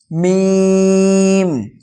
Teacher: দুই ঠোটে শুকন অংশ মিলিত হয়ে উচ্চারিত হয় মিম